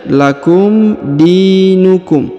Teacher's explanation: huruf di dipanjangkan dua harakat ya karena di depannya terdapat Ya Sukun